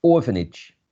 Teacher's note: there's a primary stress in this first syllable